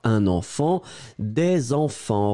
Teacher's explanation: le S final pour marquer le pluriel. On ne le prononce pas, un enfant, des enfants.